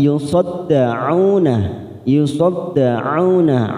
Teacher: ain duma bertemu waw sukun 2 harokat